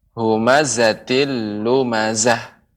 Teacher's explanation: pengucapan zai ya itu lebih banyak desisnya